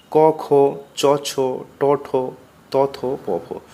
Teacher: এদের উচ্চারণে ঘোষ অর্থাৎ সুর নেই তাই অঘোষ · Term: অঘোষ বর্ণ